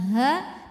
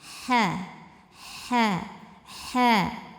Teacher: Ha ini dari tengurukan bagian tengah bunyinya halus kayak enggak ada kotoran sama sekali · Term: huruf ha